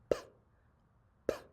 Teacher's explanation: It's another unvoiced sound. And we got to catch that puff of air that comes out.